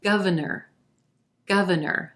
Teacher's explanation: three syllables here emphasis on the first syllable and the ah as in plum vowel sound governor then our second syllable is gonna sound like a schwa